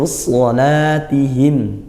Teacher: shad tadi dibaca tebal ya, pangkal lidah naik.